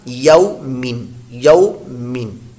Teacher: واؤ لین، اس کو لمبا نہیں کرنا